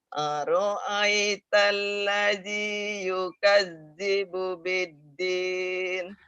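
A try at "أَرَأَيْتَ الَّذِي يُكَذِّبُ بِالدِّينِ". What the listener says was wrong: Aro-nya pendek ya Bu ya. Aro'ai. Aro'ai. Aro'aital ladzi yukadzibu biddin. Aro-nya pendek.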